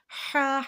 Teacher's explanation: ہا حلق کے بیچ والے حصے سے ادا کرنا ہے، ہا۔ اور آگے ٹھنڈی ہوا آئے گی، اسٹارٹنگ میں جب ہم پڑھیں گے تو ٹھنڈی ہوا آگے کی جانب ہم پھینکیں گے اور پھر ادا ہوگا حرف ہا۔